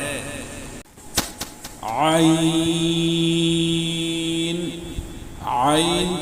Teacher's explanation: عین کا مخرج وسط حلق، یعنی حلق کا درمیانی حصہ، حلق کے درمیانی حصے سے عین ادا ہوتا ہے۔